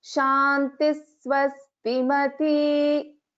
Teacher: So shantihi, when we split it is shantihi swastimati, and when we are chanting it, we should chant it as shantis swastimati. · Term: visarga